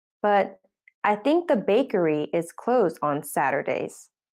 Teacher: the bakery is now old information so it gets a rising tone the new information with a falling tone comes at the end · bakery is now old information so it gets a rising tone the new information with a falling tone comes at the end of the sentence